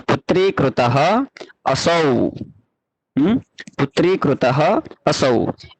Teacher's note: विसर्ग यानी दो बिंदु जो होते हैं जिसका हकार के समान उच्चारण होता है, उसको हम विसर्ग कहते हैं।